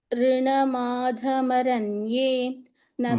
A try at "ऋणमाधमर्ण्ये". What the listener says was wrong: मर्ण्ये मरण्ये इति नास्ति मर्ण्ये मर्ण्ये so you are telling ऋणमाधमरण्ये maranye it is not maranye it is maranye मन्ये मरण इति नास्ति there is no marण्ये marण्ये before n